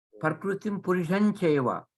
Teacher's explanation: This Anuswara has to be followed, chanted like a Chavarga nasal.